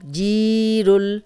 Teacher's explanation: یہاں یائے مدہ ہے، جزم والی یا، پیچھے جیم پہ زیر، 2 حرکات لمبا کریں گے، را کو موٹا پڑھیں گے اور جزم سے ملائیں گے۔